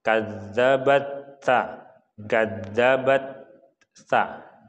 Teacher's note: Jadi karena di sini ada hukum tajwid, yaitu yang mana apabila ada ta bertemu dengan sa yang mana posisinya berada di hampir sama, ta itu lidah berada di belakang gigi atas, sa berada di tengah-tengah gigi.